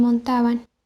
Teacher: la bilabial se pronuncia como fricativa, tal como se observa en montaban